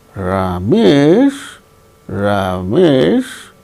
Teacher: When there is a sense of doubt, we use fall rise tone. · Is Ramesh a nice man? Ramesh, that is fall rise tone.